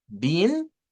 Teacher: si yo digo been, nótese que mis labios no se juntan como para la como para la M.